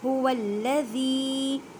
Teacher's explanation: ہا کو حلق کے نیچے والے حصے سے ادا کریں، واو کو لام مشدد کے ساتھ ملائیں، اور یہ الف ہے اس کو نہیں پڑھنا، یہ رسم الخط ہے۔ · زال کو نرمی سے ادا کریں کیونکہ یہ نرم حروف ہے، اور زال کو ایک الف کی مقدار میں کھینچ کر پڑھیں کیونکہ یا ساکن سے پہلے زیر آ گئی ہے